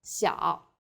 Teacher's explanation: you lay your tongue flatter and extend the two sides of your mouth wider